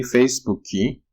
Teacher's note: For example, when you say Facebook in Brazilian Portuguese, they say Facebooki. So that's an insertion of vowel, Facebooki, but there's no diphthong being created.